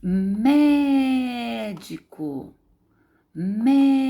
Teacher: A sílaba forte aqui é o mé, mé. Não é a última, não é a penúltima, é a antepenúltima sílaba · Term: proparoxítona